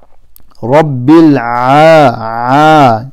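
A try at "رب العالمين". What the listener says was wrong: instead of A, there's a Ayn here.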